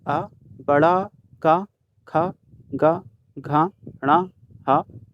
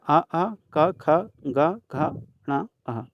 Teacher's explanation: ये सभी हमारे कंठ से उच्चारित होते हैं